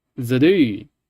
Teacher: It's not just zidu with a low mid falling. It's actually zidu with a very high falling.